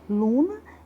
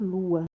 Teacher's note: E também temos a queda do N, que trata-se de uma mudança de maior complexibilidade devido ao fenômeno de nasalização das vogais. Em suma, o N, sempre que após uma vogal nasalada, desaparece. E aí, como exemplo, nós temos a palavra luna, que passa a ser, como ele perdeu na nasalização perde o N, então passará a ser lua.